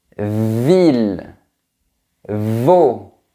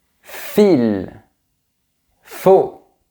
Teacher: Pour les deux sons, mes dents sont sur mes lèvres. Mais pour V, ça vibre.